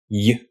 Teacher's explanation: when you say that Y sound U the middle of your tongue raises up towards the roof of your mouth